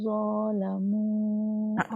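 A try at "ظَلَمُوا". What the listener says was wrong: Zat pendek. Zalamu. Mungkin ternampak macam nampak alif kan. Itu lam. Zalamu.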